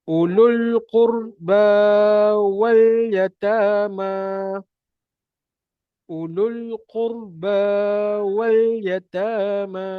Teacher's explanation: Sebab lam itu bertanda sukun. Qurba dua harakat. Wa abaikan hamzah wasal. Yata dua harakat. Ma dua harakat.